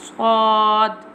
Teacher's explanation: Swad pronounced from the tip of the tongue touching the inner edge of the top two and bottom two front teeth